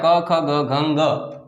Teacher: આ જે છે 5 વર્ણો ક્યાંથી આવે છે? કંઠમાંથી નીકળે છે. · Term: કંઠ્ય સ્થાન